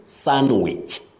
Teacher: what we avoid is pronouncing the D in that word. The D is silent.